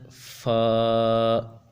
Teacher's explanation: शफ विया कहा जाता है इनमें से जो पहला है फा यह ऊपर के दांतों के किनारे और निचले होंठ के तर हिस्से से अदा होता है